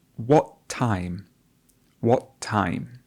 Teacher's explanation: And you notice that the air comes up, what stops at the epiglottis and does not continue. And this is a feature called the glottal stop.